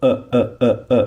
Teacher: when you hear the sound of uh uh uh so know that there is Hamza